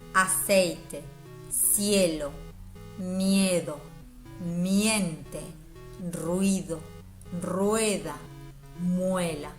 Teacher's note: las vocales siguen sonando juntas de todos modos estando unidas también mantiene cada una su sonido original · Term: diptongo